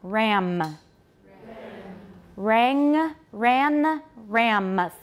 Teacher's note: a lot of taiwanese drop the m final m in words